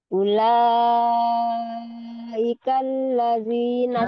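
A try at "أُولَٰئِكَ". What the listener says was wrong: Ika, Ika nggak mau nyeret. Ula Ika. I Hamzah Mujahir Musyiddah.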